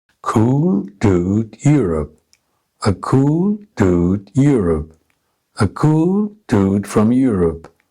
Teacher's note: add some function words to the sentence this is done by keeping the stress patterns on the content words and compressing the function words without any stress on them here content words are given first without any function words now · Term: rhythm of english